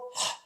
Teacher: 목구멍에서 하 하면서 바람 소리를 내는 거예요. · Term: 히읗